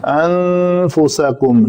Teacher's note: نون کے بعد حروف اخفاء میں سے فا ہے تو یہاں پہ اخفاء ہوگا